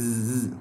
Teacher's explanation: Kalau zai ada suara sofir dia z, kalau zal tak ada kan.